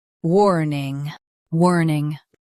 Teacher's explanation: Emphasize wor and keep ning soft.